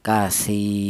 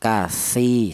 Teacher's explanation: Alasannya ada ya mati yang di dalam huruf yang berharakat kasrah dibaca panjangnya ya satu alif atau dua harakat atau dua ketukan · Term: mad thobi'i